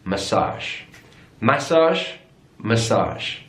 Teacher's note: so stressed on the last syllable